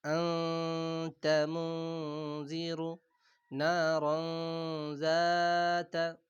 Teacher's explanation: তানবিন এবং নুন সাকিনের আওয়াজকে নাকের ভিতরে লুকিয়ে গুন্না সহকারে পড়তে হয়, গুন্নার সাথে ১ আলিফ পরিমাণ গুন্না দিয়ে পড়তে হয় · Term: ইখফা